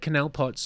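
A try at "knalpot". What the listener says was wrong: a null pot? pot? K-N, it's the K is silent, like knife, no, null pot.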